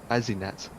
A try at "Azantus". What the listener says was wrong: You say Azinuts. Can't be. A double Z would be Azantus. Can't be Azinuts.